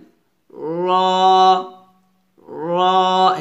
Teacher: মোটা করতে হবে, মোটা করে উচ্চারণ করতে হবে, র র এভাবে। র একটু হেভি করে গাঢ় করে মোটা করে উচ্চারণ করতে হবে